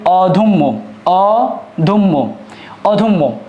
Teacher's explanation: তাহলে এই দয়ের সাথে যে একটা অ আছে, এই অয়ের পরে জ ফলা থাকার কারণে, এই অয়ের পরে জ ফলা থাকার কারণে মধ্য অয়ের উচ্চারণটা উবৎ বা উকারান্ত হয়ে থাকবে